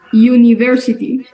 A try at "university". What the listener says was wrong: Muy bien, no decimos university, ¿ok? Como universidad, no. Ahí es prácticamente como si tuviésemos nosotros, podríamos decir como una Y, no tan yu, no como yuca, sino university. Es como el sonido más parecido.